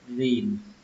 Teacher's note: Ở đây âm y các bạn hơi kéo nó ra một chút nhé, hơi kéo dài nó ra một chút, rìm. Kết thúc bằng âm n, rìm.